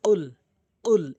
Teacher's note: কফটি জিব্বার গোড়া উপরে তালু থেকে উচ্চারণ হয়